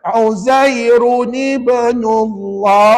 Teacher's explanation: Ada qalqalah juga ya, sebab ada ba mati kat tengah-tengah kan.